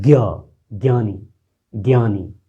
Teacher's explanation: मूर्धा और कंठ, मूर्धा और कंठ से आपकी आवाज आ रही है